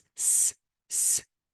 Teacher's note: if you want to say s s and put your finger on your th throat there will be no vibration and because there is no vibration it is voiceless